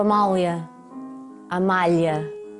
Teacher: O L brasileiro é molhado e nós pomos a língua para trás.